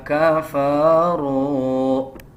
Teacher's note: واو کے اوپر جزم ہے، اس سے پہلے پیش آ رہا ہے، 1 سیکنڈ لمبا کریں گے، حروف مدہ ہے۔